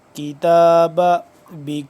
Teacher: काफ बा के साथ मिल रहा है और बा साकिन है तो यहां पे हम कलकला कहेंगे यानी कि साकिन हरूफ को हिलाकर पढ़ने को कलकला कहते हैं।